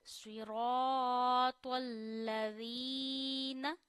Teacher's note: या मद्दा का मतलब होता है आपने या को एक उंगली जितना खींचना है, तो यहाँ या को एक उंगली जितना खींचिए।